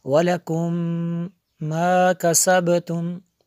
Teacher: میم ساکن کے بعد دوسری میم ہے، تو یہاں پہ ادغام میں شفوی ہے، اس لیے یہاں پہ ہم نے غنہ کیا